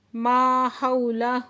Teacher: حو پہ واو ساکن سے پہلے زبر ہے تو واو لین ہے، نرمی سے پڑھیں گے